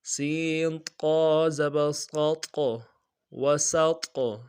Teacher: واو زبر و، سین طا زبر صاد قا، قا قلقلہ میں سے بھی ہے اور موٹا حرف بھی ہے، دونوں کو ادا کریں گے